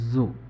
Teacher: প্রথম জটা আমরা যখন উচ্চারণ করি তখন আমাদের জিহ্বার উপর দিয়ে বাতাস পাস হতে পারে, যেমন জু। জিহ্বাটা বেশ সামনের দিকে এগিয়ে আসে এবং জিহ্বা এবং জিহ্বার উপরে যে দাঁতের পিছনের অংশ এইখান কাছাকাছি চলে যায় এবং এইখান থেকে একটু বাতাস পাস হতে পারে